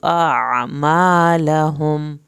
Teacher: आखिर में लहुम पे मीम नहीं हिलाना और देर भी नहीं लगानी